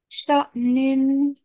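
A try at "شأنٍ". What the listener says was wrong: Good job.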